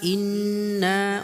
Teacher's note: ওয়াজিব গুণনা হবে এবং একালি পরিমাণ টান হবে।